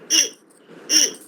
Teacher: ई हमारे तालु से थोड़ा सा हमारी जीभ टच होती है। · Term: तालव्य